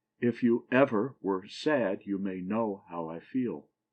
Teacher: A foot that has the last syllable accented and the first 2 not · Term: anapest